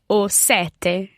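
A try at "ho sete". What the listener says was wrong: o sete, and comparing that with sette. Slightly different vowel sounds, and of course you're bouncing on that T in there.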